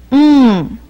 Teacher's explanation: 它是一个鼻音，双唇微开，舌尖抵住上齿龈，然后气息由鼻腔徐徐地送出，声带需要震动